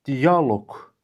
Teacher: Bu sözün düzgün tələffüzü dialoq formasındadır. Baxın, i a sait hərf birləşməsi arasında y samiti artırılıb. Sözün tələffüzündə səs uzanması hadisəsi olmadığına görə qeyd edilməyibdir.